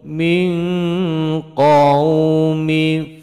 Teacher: ihfa hakiki menyamarkan nun sukun menuju pada huruf qaf, mendengung samar dua ketukan